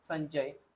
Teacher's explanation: इथे काय झालेल आहे या अनुस्वारच्या समोर च आलेला आहे म्हणजे आता अनुस्वार रिप्लेस होईल च वर्गातील अनुनासिक वर्णांनी